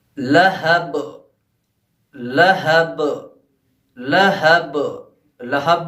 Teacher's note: لہب میں جو با ہے وہ آخر میں آیا ہے، تو اس لیے با پہ جو قلقلہ ہوگا وہ زیادہ ہوگا، یعنی ٹکراؤ جو ہوگا ہمارا زیادہ ہوگا. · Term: قلقلہ کبریٰ